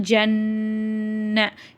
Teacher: நூன் மேல ஷத்து வருது இங்க குன்னா செஞ்சு ஓதணும்